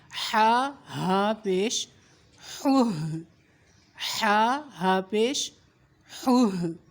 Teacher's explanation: حلق کا آخری حصہ, وہاں سے یہ ہا ادا ہوگا